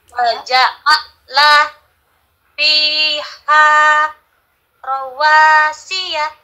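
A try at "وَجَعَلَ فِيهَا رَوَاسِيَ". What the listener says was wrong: Bagus, tapi ini saya dengarnya kayak A. Bukan A, tapi A. Ain. Ain. Bukan A, tapi A.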